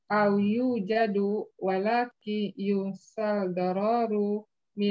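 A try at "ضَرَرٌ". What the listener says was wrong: Roknya jangan panjang kalau begitu. Jangan dororu, jangan dororu.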